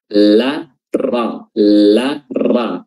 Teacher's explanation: Dan huruf lam ini makhrajnya harus sesuai juga, yaitu ujung lidah bertemu dengan langit-langit bagian depan, berdekatan atau hampir sama dengan makhrajnya huruf ra